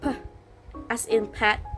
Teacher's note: your lips come together, stop the air, and then release it